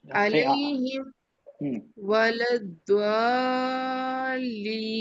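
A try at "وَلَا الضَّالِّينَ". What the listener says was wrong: اچھا دعا نہیں ہے بیٹا, ہونٹوں کا استعمال نہیں کرنا ہے. دعاد نہیں ہے, سواد دعاد نہیں ہے, وہ غلط سیکھتے ہیں. صاد دود دو دو دود دو ولد ضالین ولد ہاں دو ہونٹوں کا بالکل استعمال نہیں کرنا ہے اس میں. بولے دعا آپ کی ہونٹ گول ہو رہے ہیں, اس کے لیے بولا دعا ایسی آواز ہلکی سے نکل رہی ہے, دعا جیسی آواز نکل رہی ہے, وہ نہیں کرنا ہے.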